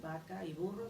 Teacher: la ve Se confunde es el fenómeno del betacismo todo se pronuncia B labial · Todo se pronuncia bilabial, vaca y burro son iguales